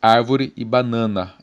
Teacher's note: árvore a sílaba tônica na primeira sílaba e banana na segunda sílaba